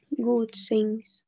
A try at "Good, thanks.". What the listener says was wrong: Good, thanks. Немножко язычок между зубками. Thanks.